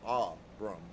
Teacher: Phonetically with a heavy accent on the first syllable.